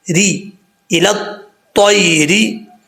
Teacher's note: یہاں پر بھی یا مدہ نہیں ہے, یا لین ہے, اس کو بھی لمبا نہیں کریں گے. را کے نیچے زیر ہے, را بریک پڑھا جائے گا